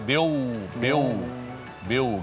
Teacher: Jadi dengungnya enggak dapat. seharusnya dibagi dua antara dengung dari hidung sama makhraj wau yang dari bibir. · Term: idgham bighunah